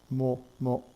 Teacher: Let's take the so-called lip sounds. These are the sounds that are formed by closing your lips. The M sound and the 3 P sounds in Korean are all formed that way.